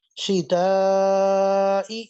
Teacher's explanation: تا باریک آ رہی ہے، لیکن لمبا کریں گے، اس کو کھینچ کر پڑھیں گے، مد آ رہی ہے